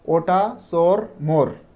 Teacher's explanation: ওযুক্ত word যখন আমরা উচ্চারণ করব জিভটা একটু উঁচু হবে এবং এইটা পেছনের দিকে গিয়ে উঁচু হবে এবং ঠোঁটটা গোল থাকবে এবং ঠোঁট অল্প খোলে।